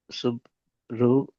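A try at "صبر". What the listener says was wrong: அல்ல, பூ உச்சரிப்பு வரக்கூடாது. சுவா இது சுவாது. சுவாது.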